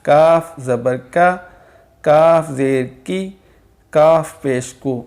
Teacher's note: اب جو قاف باریک ہے اس کو، جو قاف موٹا ہے اس سے تھوڑا سا آگے جو درمیانی ہمارا منہ ہے وہاں سے ادا ہوگا، یعنی کہ سخت جو ہمارا تالو ہے وہاں سے ادا ہوگا۔ کاف زبر کا، کاف زیر کی، کاف پیش کو، اس کی آواز کو باریک کریں گے بنسبت قاف جو نقطوں والا ہے۔ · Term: باریک کاف